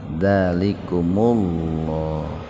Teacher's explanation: Jadi, mim yang tadinya sukun menjadi domah. Asalnya kum jadi kumu. Nah, itu. Nah, domah bertemu lafaz Allah dibacanya tafhim tebal.